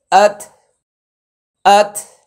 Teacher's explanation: তা এর উপরে যখন জজম হবে তার উচ্চারণের শেষ অংশে মানে শেষে একটু বাতাস হবে